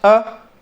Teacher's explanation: ई, ए इनमें गोल नहीं हो रहा तो अवृत्त हो गए। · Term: अवृत्तमुखी